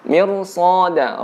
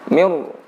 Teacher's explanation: Ra di sini ditebalkan. Cara menebalkannya dengan membulatkan bibir kita. Mir. Jadi pembulatan bibir ini membantu untuk menebalkan huruf ra.